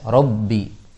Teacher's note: ba di sini harus jelas jahar dan syiddahnya. Jangan sampai sedikit becek jadi fa nantinya robbi, padahal bukan robbi, harus jelas di ininya, di ba-nya, syiddah dan jaharnya harus jelas.